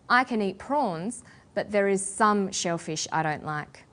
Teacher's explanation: restricted or limited amount of something, we put the stress on the word some.